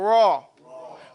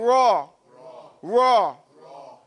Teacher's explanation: when you pronounce Ra, your tongue does not touch anywhere in your mouth